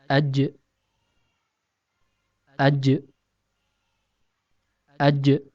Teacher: huruf Jim keluar dari tempat pertemuan antara tengah lidah dengan langit-langit atas